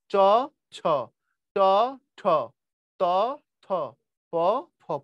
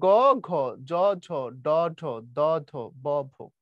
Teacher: দ্বিতীয় এবং চতুর্থ বর্ণে বাতাস বেশি